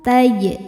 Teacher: Wala taj'alu taj. Ada qalqalah sughra karena jimnya sukunnya asli dan ada di tengah bacaan. Dibacanya memantul dengan pantulan yang kecil.